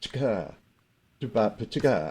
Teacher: ga is louder than the ch, but ch is on the beat